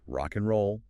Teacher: So instead of an I with a gap, you get an I. The final consonant of one word links directly onto the initial vowel of the next.